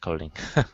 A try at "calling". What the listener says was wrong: calling instead of co calling, open your mouth up.